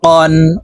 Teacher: অফ হরফ জিব্বার গোড়া তার বরাবর উপরের তালুর সঙ্গে লাগাইয়া উচ্চারণ করতে হবে